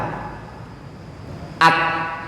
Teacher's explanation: Pertama dia syiddah, nafasnya tertahan.